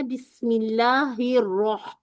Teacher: रह पे जब आए तो वो वाली हा जो है वसत से अदा करनी